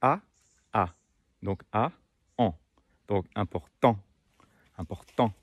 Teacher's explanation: chaque voyelle nasale a une correspondance orale donc le son en la correspondance orale est le son a